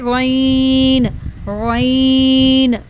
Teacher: गैन इस pronounced from the upper part of the throat, इसको हमने गैन को अपर थ्रोट से अदा करना है। इसको हैवी साउंड में पढ़ेंगे, इसमें हवा नहीं होनी चाहिए। गैन, नो एयर, ठीक है।